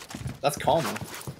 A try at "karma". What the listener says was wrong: That's not karma, dude. Why do you add an R to the end of karma and an A to you? Nah, you're saying karma.